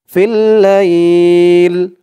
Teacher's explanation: ফা লামজের ফিল, লাম ইয়া জবর লাই, ফিল লাই, লামজের লি, ফিল লাইলি, এই যা চিহ্ন হতে থামলে এখানে উচ্চারণ হবে ফিল লাইল। লাই বলে এক আলিফ টান দিয়ে এই লামকে ধরবে, লামের নিচে জের সাকিন হয়ে যাবে। ফিল লাইল, মদ্দিলিন এক আলিফ টান, ফিল লাইল।